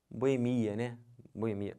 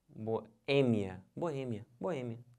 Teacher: A sílaba tônica é esse E, que já está até acentuado. Não pode falar boemia, como as pessoas falam, tá?